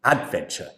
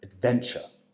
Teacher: so the stress has to come on the second syllable